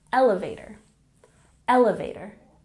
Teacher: For example, the elevator is about to go down to the lobby. Pay attention to the pronunciation in elevator. We emphasize the first syllable, elevator, elevator.